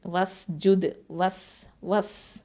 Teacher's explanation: வாவ் ஃபத்ஹா சீன் சுக்குன் வஸ், நடுவில் இருக்கக்கூடிய ஹம்சத்துல் வசல் உச்சரிக்க மாட்டோம்